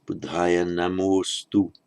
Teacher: But remember the ah drops out. So it becomes Buddhaya Namostu.